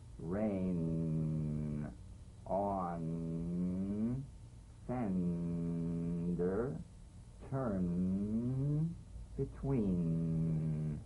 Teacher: nasal consonant made with the tongue blade to the upper gum Ridge its most resonant and it's well forward placed it's a melodic legato consonant now to seal the end with